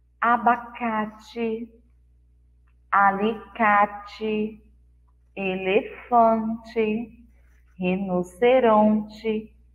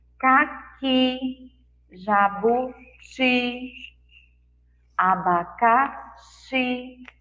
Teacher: Essas palavras tiveram na última sílaba o som mais forte, de I forte.